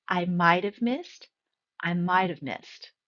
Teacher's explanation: And when we take a look at might have, when I'm speaking, I'm going to be a little bit more softer and combine those two words. The T is soft and almost disappears and blends in with the have.